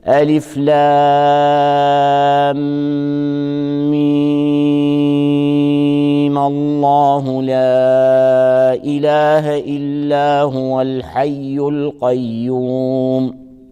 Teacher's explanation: الوجه الثاني وصلا هو عدم الاعتداد بالحركة العارضة، بالفتحة العارضة، فيبقى الإشباع في المد مع فتح الميم وصلا